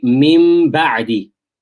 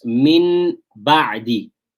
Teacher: you've got the noon sakin there, which is going to change to a mim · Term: iqlab